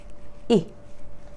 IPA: i